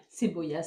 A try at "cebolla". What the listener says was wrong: Cebolla, mais oui. Prononciation.